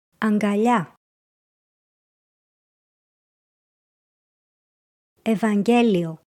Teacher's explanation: In γγ and γκ, we pronounce the first γ as the letter ν and the combination separately.